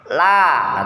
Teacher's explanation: ketika diucapkan posisi lidah bergeser dari makhrajnya, inhiraf, bergeser kan, tadinya kan di sini kan, kemudian ketika pengucapan berubah posisi lidahnya, la, ke bawah kan, la, gitu karena punya sifat istifal dan infitah, ya.